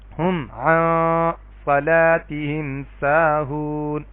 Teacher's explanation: نون کی میں نے آواز تو نکالی ہے ناک سے لیکن میں نے زبان کی نوک کہیں پہ ٹچ نہیں کی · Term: اخفاء